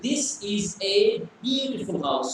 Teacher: So when you say isn't it, it is going high up. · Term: intonation